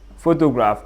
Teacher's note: the word photograph is a three syllable word with the primary stress on the first syllable